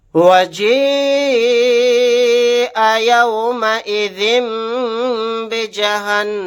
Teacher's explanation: یہاں پر نون کے اوپر تشدید ہے، یہاں پر غنہ کر کے پڑھیں گے